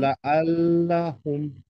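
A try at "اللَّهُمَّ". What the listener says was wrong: Good. আবার বলেন।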